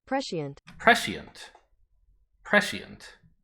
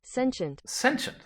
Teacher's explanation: the SC is still a S instead of a sh. And you actually pronounce the diphthong there